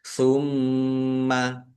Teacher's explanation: mim tasdid bacaan ghunah atau mendengung ditahan biar tampak mendengungnya nya tumma qof dumah wawu sukun mad thobi'i panjang dua harakat